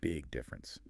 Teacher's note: the G sound at the end of big connects right into the D sound at the beginning of difference.